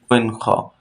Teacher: কণ্ঠনালীর শেষ হইতে গইন খ